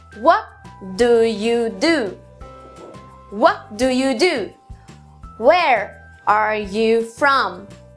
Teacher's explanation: o sétimo padrão começa forte tem duas sílabas fracas e uma forte